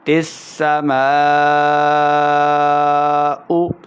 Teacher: میم الف زبر مد کو ہم 3 سے 4 حرکات کے برابر جو ہے وہ لمبا کر کے پڑھیں گے